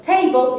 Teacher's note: table is stressed on the first syllable and balloon on the second